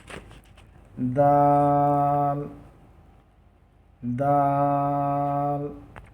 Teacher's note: জিহ্বার আগা দুই দাঁতের গোড়ার সাথে লাগিয়ে তিন আলিফ টেনে উচ্চারিত হয় দাল